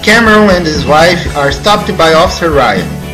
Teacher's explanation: Deleta-se a letra H na palavra his. Então emenda-se and e his, formando ands.